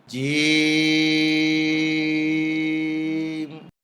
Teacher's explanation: জিহ্বার মাঝখান উপরের তালুতে উঠবে, শক্ত সবল আওয়াজ হবে